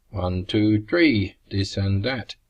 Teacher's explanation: there is no th sound in Filipino languages, so th, th, becomes t or d.